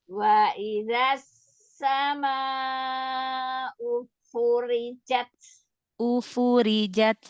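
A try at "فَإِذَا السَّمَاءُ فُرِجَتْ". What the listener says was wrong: jangan ada jeda dari ya. Ufurijat.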